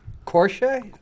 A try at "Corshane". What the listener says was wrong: There's an N in there. That is correct. That is correct.